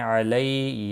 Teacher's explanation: علی یا لین ہے، تھوڑا نرمی کے ساتھ کھینچ کر ادا کریں گے